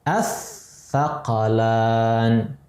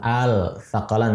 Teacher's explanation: Lamnya sudah hilang, dimasukkan ke tha. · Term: idgham